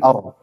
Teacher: bergetar tidak boleh berlebihan Jangan er tapi jangan er tapi Ar suaranya bergetar sedikit saja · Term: takrir